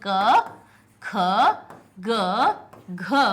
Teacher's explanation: क ख ग घ ये अक्षर हमारे कौन से हो गए, सारे कंठ से हो गए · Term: का वर्ग